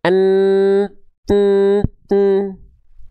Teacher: Huruf mim dan huruf nun sama-sama dia punya makhraj atau sifat yang keluar dari hidung. Namanya alkhaisyum.